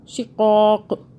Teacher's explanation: شقاق، رک جائیں گے. قاف کو ہم نے ساکن کر دیا رکنے کی صورت پہ